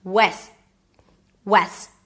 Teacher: So, you want to drop your jaw here. And then the S is pronounced until it it is stopped abruptly. And that is technically the T.